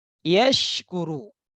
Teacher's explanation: ya dan shin ini sama-sama huruf tengah lidah